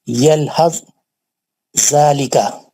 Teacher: हुर्फ सा साकिन का जाल मुशद्दद में इदगाम मुतजानिसैन हो गया